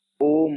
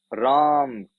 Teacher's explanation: दीर्घ स्वर में हरस्व स्वर की अपेक्षा ज्यादा समय लगा था, लेकिन प्लुत स्वर में सर्वाधिक समय लग रहा है।